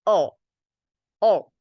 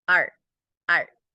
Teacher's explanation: However, O is pronounced with the tip of the tongue, touching the gum ratio, while R is pronounced with the tongue near but not touching the roof of your mouth.